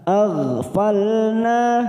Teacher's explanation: Tuti' masuk kata huruf ain yang bersukun, sifatnya kita alirkan karena mempunyai sifat tawasud dan jahar maka bunyinya tuti'man, tuti'man, nun sukun bertemu hamzah idhar halqi, kita baca jelas, man aghfalna, huruf go, goin sukun jangan sampai dipantulkan karena bukan qalqalah, kita tahan · falna 2 harokat kita panjangkan fathah diikuti alif